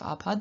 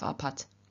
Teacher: Nominative and vocative, we have a form apat. Remember when the stop stands at the end of a word in final position, it becomes unvoiced, or it loses its voice, and so instead of apad we have apat.